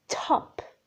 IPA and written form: tʰɒp (top)